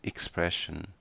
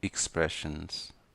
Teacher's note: A pronúncia correta, tanto no inglês americano quanto no britânico, é com IKS.